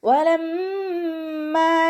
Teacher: വാവ് ഉച്ചരിക്കുമ്പോൾ ചുണ്ടുകളൊന്ന് വട്ടത്തിൽ പിടിച്ചിട്ട് ഉച്ചരിക്കുക. പല്ല് ചുണ്ടിൽ തട്ടാത്ത രൂപത്തിൽ വെക്കുക